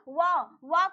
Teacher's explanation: व को हम दंतोष्ठ कहते हैं, दांत और ओष्ठ से मिलकर बोला जाता है